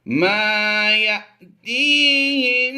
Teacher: ما یا جھٹکا دیں گے، الف پر جزم ہو یا حمزہ پر جزم ہو، دونوں حمزہ میں شمار کیے جاتے ہیں، تو حمزہ ساکنہ کو جھٹکا دے کر پڑھتے ہیں